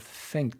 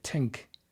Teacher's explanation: Irish will say, instead of think, they'll say tink.